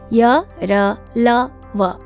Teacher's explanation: इनके उच्चारण में जीभ मुंह के किसी भाग को पूरी तरह स्पर्श नहीं करती, उन्हें अंतस्थ व्यंजन कहते हैं।